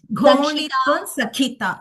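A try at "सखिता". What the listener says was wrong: Sakhita. Instead of Sakshita. Sometimes in our enthusiasm to give that Mahaprana effect, we give that ka extra also.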